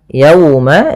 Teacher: ada wau sukun didahului dengan fathah maka ini bacaan lin yang di mana kita lembutkan dalam melafalkannya